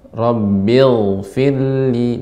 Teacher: Ghain ini termasuk huruf yang rakhawah, ya, artinya mengalirnya makhraj, ya, ketika diucapkan. Ketika sukun juga Rabbil firli, dan dia isti'la, naik.